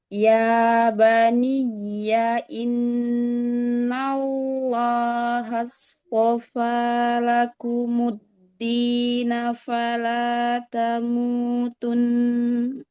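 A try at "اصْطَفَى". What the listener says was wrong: Halsto. Halsto. Nah, haknya tipis. Halsto. To-nya angkat langsung pangkal lidah. Innallaha halstofa. Halstofa. Langsung sotnya angkat pangkal lidahnya ya.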